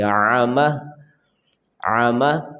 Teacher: آگے ہے جی، عین اور میم دونوں حرکات میں سے عامہ، عامہ آمہ نہیں پڑھیں گے. عین ہے تو عین کی آواز پڑھیں گے، عامہ عامہ.